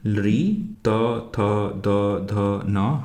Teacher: हमारी जिह्वा हमारे दांत को टच करती है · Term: दंत्याः वर्णाः